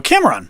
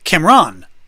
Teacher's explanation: I do emphasize the first syllable